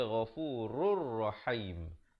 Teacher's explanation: Ghafurur. Di sini tanwin bertemu ra, idgham bila gunnah, masuk tanpa dengung. Asalnya ghafurun rahim.